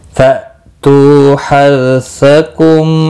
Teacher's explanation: हमजा साकिन को झटकी के साथ पढ़ेंगे। तू वाव मद्दा है, 1 अलिफ के बराबर खींच कर पढ़ेंगे।